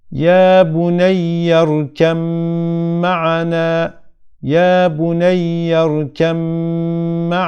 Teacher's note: mim harfi gelmiş ve bu b harfini Mim harfine idrak ediyoruz Mim harfini şeddeli olarak okuyoruz b harfinden herhangi bir eser kalmıyor · sakin olarak cezimli olarak gelirse arkasından mim harfi harekeli olarak gelirse B harfi tamamen Mim harfine katılır şeddeli tek bir mim harfi gibi okunur b harfinden herhangi bir belirti eser kalmaz